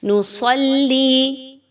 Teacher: نصلی، صاد حروف مستعلیہ پر پڑھی جائے گی، یعنی موٹی کر کے صاد تخفیم کے ساتھ پڑھی جائے گی